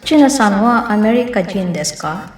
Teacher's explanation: A question usually ends with a rising intonation